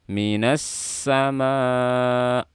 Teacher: Di sini ada alif lam syamsiyah, sin bersifat rokhawah, dan sofir pastikan suara sinnya jelas.